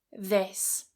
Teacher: This has a very, very short vowel, this, and the ending is a voiceless s, this.